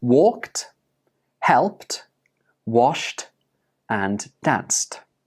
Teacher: Ka, pa, sh, and s are all unvoiced consonant sounds.